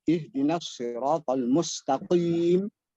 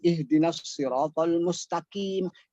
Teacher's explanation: Singkatnya, huruf qof harus keluar dari pangkal lidah.